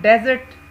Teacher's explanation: जो अंडरलाइंग पहला हिस्सा है उसके ऊपर स्ट्रेस है